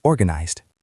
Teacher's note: it ends in a Z sound, which is voiced, so the ending is a D sound